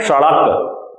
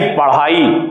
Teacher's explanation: होता क्या है, जीभ की नोक ऊपर उठेगी और तेजी से नीचे गिरती है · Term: उत्क्षिप्त